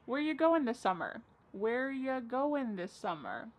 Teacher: Where ya, which is you, goin', dropping the G.